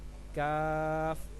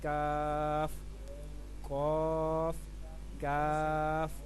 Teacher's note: اس میں آپ نے اپنی زبان کی جڑ کو تالو کے جو سخت حصہ نا وہاں پہ رکھ کے ادا کرنا ہے